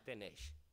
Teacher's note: sufrirá el influjo de la I, que no se irá gratis, por así decirlo, y palatalizará la S y la hará tenesh. Esos, digamos, que están prácticamente en todos